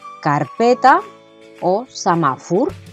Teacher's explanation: La sílaba tónica en estas palabras se encuentra en la penúltima posición dentro de cada palabra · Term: paraules planas